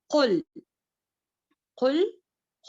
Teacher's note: ہماری زبان کا پچھلا حصہ جو ہے یعنی کہ زبان کی جڑ جو ہے بلند ہو جاتی ہے تالو کی طرف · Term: تفخیم